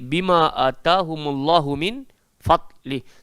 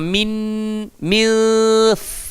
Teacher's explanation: Cara nak sebut fadli, nun mati nak masuk dekat dalam fa. Ingat, gigi arnab duduk dekat atas bibir bawah.